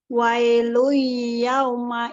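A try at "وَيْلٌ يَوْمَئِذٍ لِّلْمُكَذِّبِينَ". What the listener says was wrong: Yang ada gunah yang mana? Ya, ini ada gunah. Udah masuk gunahnya, tapi kurang panjang. Ya, lebih panjangin lagi. Wailu yauma idzil lil mukadzibin. Jadi ditahan lebih lama 2 harokatnya ya. Memang kecenderungan orang kita mungkin pada saat belajarnya, saya juga ya, saya di sini sama teman-teman juga gunah itu ternyata di sini kita kurang panjang. Jadi mungkin waktu belajar dulu kurang panjang.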